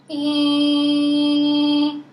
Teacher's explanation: I don't want you to do hey I want you to make it nasal